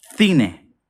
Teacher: In Spain, in central Spain especially, this will sound cine. It's like the TH in English